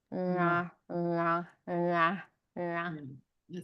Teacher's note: So it's just to point out that the na is dental